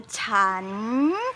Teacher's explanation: Suck the air in, rise up and go down a little bit at the end.